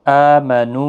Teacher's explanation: یہاں پر حمزہ کے اوپر کھڑی زبر ہے، 1 الف کی مقدار کے برابر کھینچ کر پڑھیں گے۔